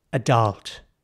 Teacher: the focus is on a second half of the word not so much the A and the D